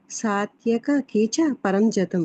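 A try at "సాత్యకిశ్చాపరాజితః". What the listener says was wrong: సాత్యకిస్ చాపరాజిత సాత్యకిస్ లేకుంటే అది కీచకం అయిపోతుంది, అది తప్పు. అది దృష్టద్యుమ్నో విరాటశ్చ సాత్యకిస్, అక్కడ సాత్యకిస్ చాపరాజిత. ఆ షాకి దీర్ఘం ఉంది, కానీ అక్కడ మనం పలకాల్సింది చాకు దీర్ఘము. విరాటశ్చ సాత్యకిస్ చాపరాజిత.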